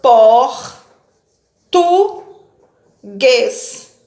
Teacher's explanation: a palavra português é uma palavra oxítona porque tem a última sílaba mais forte